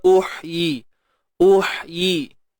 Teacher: huruf ha pedas, matikan dia, sempitkan tengah kerongkong kita